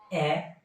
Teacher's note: এ সম্মুখ প্রসারিত নিম্ন মধ্য অর্ধ বিবৃত।